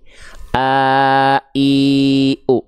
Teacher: Bedanya, kalau hak besar pita suaranya membuka, kalau hamzah pita suaranya tertutup.